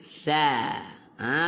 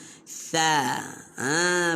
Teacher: Ini huruf sa ni kita kena keluarkan sedikit lidah. Hujung lidah keluarkan, letak bawah gigi atas dan sebut.